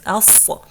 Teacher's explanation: Remember, you have to hold the tongue up, all of it up like this, as, because it has the characteristic of itbaq.